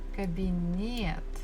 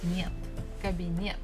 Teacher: So still the stress falls on the last syllable.